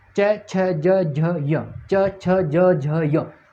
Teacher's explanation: जीभ का किसका स्पर्श करेगी? तालु का स्पर्श करेगी। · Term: तालव्य